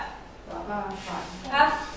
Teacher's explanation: Karena dia punya sifat hams, udaranya keluar semua. Jadi kalau dilihat itu gini, kebuka, pita suaranya kebuka.